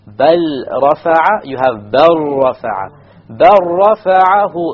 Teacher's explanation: you drop the lam completely.